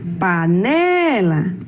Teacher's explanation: O ne é a sílaba tônica da palavra.